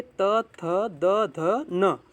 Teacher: ऊपर की दांतों के निकट से ये बोला जा रहा है